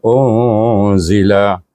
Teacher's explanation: dibaca dengan dengung iaitu pertengahan antara izhar dengan idgham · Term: ikhfa hakiki